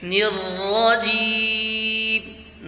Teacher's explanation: نون میں آواز باریک، را میں آواز موٹی، ٹھیک ہے، را پر زبر ہے، را مفتوحہ، اس میں آواز موٹی ہوتی ہے۔